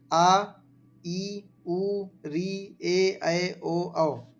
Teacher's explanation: इन स्वरों के उच्चारण में ह्रस्व स्वरों की अपेक्षा दोगुना से अधिक समय लगता है। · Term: दीर्घ स्वर